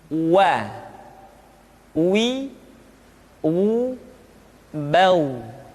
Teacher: huruf wa diucapkan dengan cara memonyongkan dua bibir kita